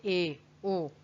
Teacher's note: अर्ध संवृत, यानी कि मुख कम खुलता है लेकिन खुलता है